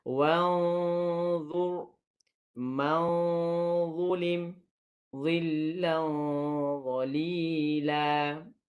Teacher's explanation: Huruf dha tebal, maka dengung pun perlu tebal. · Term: dengung tebal